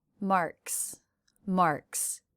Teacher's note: the last sound of marks name is the K sound unvoiced so the apostrophe s is also unvoiced